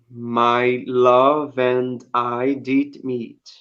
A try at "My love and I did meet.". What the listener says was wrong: Yeah, but can there be a little bit of no breaks in between? Do you know what I mean? My love and I, as if you're singing it, as if you're singing it. My love, because it in the song, my love and I did meet, right?